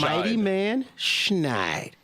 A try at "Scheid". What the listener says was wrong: Scheid. No, not Snide.